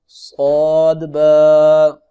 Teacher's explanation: صاد کی سیٹی بھی ہے اور موٹا کر کے بھی اس کو پڑھنا ہے